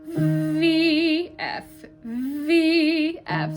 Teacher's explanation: we're switching the voice on and off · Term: phonation